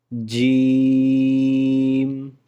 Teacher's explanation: اس کو 4 الف کی مقدار کے برابر لمبا کر کے پڑھنا ہے اور اس کو ذرا سختی سے پڑھنا ہے